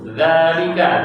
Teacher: apa itu? Dzalika, dzal harokat fathah panjang. Bukan fathah biasa, tapi fathah panjang.